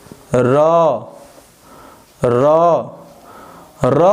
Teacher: र बोलने में जीभ में कंपन हो रहा है। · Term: प्रकंपित वर्ण